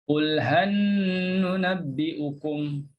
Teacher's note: Dan surah Al-Kahfi ayat 103 dibaca sama juga ada gunnah. Masukkan lam dalam nun tu satu dan kita gunnahkan nun tersebut.